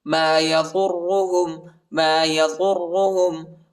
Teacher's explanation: ضاد کو را کے ساتھ ملائیں گے، را کو موٹا پڑھنا ہے اور شدت کے ساتھ بھی پڑھنا ہے.